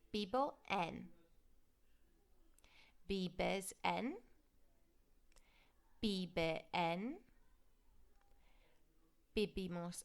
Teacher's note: you always pronounce your V as a B